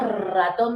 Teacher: La R no vibra, se mantiene. Pero si mencionamos ratón vibra